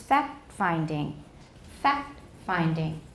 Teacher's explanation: alveolar stops often appear to get dropped in phrases such as fact finding